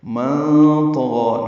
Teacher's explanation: نون ساکن کے بعد طا آنے کی وجہ سے اخفا ہے، نون کی آواز چھپائیں گے ، طا پر پڑھیں گے، غین بھی پر پڑھنا ہے اور